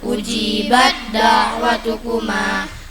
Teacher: Idgham mutajanisain, bertemunya 2 huruf sama makhraj beda sifatnya, tekan bacanya.